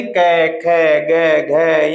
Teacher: ये सारे इनका जो उच्चारण स्थान होता है वो कंठ होता है, क्योंकि ये कंठ से बोले जाते हैं